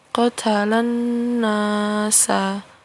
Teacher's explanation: Kemudian qatalan nasa ya, ini ada 2 hukum tajwid, yaitu alif lam syamsiyah ya, karena ada alif lam bertemu dengan huruf nun ya, jadi alif lamnya ini tidak dibaca